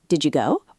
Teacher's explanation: The D at the end of did and the Y sound at the beginning of you blend. The U becomes really short, almost disappears, and then go. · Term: connected speech